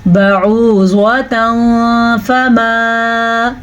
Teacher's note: اخفاء کا قاعدہ اس صورت میں ہوتا ہے جب نون ساکن کے بعد یا تنوین کے بعد، پچھلی بات تو وہی ہے جو ادغام بالغنہ میں تھی، نون ساکن یا نون تنوین کے بعد حروف اخفاء میں سے کوئی حرف آ جائے تو نون ساکن اور نون تنوین کو چھپا کے پڑھتے ہیں اور اس کے ساتھ ساتھ غنہ بھی کرتے ہیں